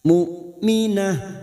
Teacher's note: hamzah sukun kita baca jelas tegas